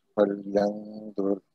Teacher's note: نون پہ غنہ ہوگا اور پھر را جو ہے یہ موٹا پڑا جائے گا